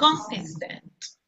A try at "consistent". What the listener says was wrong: Pronúncieme la T al final, vea.